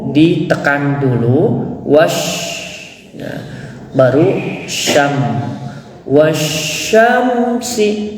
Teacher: tajwid disebut dengan alif lam sysiah atau nama lainnya idgam samsiah Mengapa disebut idgham karena wa di sini masuk ke dalam huruf Sya Nah maka disebut dengan idgam sysiah jadi cara membacanya itu ditekan